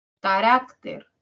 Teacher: Rak tiene mayor intensidad que Ka y Ter y por lo tanto es la tónica y Ka y Ter son las átonas.